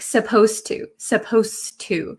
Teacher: when I pronounce supposed to um the D sound and the T sound become kind of like one sound · and the T sound become kind of like one sound so when I speak supposed to supposed to it doesn't sound like there's a d